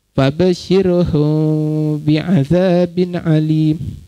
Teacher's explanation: sembunyikan mim pada mulut, timbulkan dengung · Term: ifat syafawi